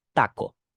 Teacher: consonant T is less explosive in in Spanish and it's more implosive